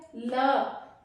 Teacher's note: ल जीभ जाकर दांतों को टच कर रही है, तो ल किस में शामिल है, दंत में।